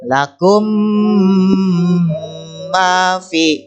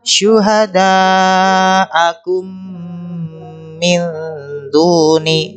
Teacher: Nah, mimnya, suara mim ini dibaca dengung ya, atau suara mimnya bertasydid jadi 2 atau double ya. Dibaca dengungnya masuk ke hidung. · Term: idgham mimi